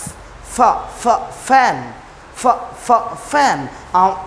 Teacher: ওকে, তার মানে এই ফ উপরের দাঁতগুলো এই ঠোঁটের পেটে লাগাইতে হবে, তখন হবে, ঠিক আছে?